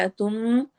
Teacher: नून की आवाज को मीम में बदल के हमने गुन्ना करना है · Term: इक़लाब